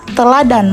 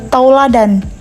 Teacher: proses perubahan bunyi vokal tunggal menjadi vokal rangkap secara berurutan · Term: diftonisasi